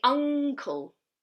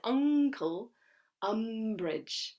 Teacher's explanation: but in here we don't say uncle uncle we say uncle we say a guttural n